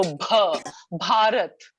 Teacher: you would have the aspirated bh, which you don't have in received pronunciation. So bh, Bharat.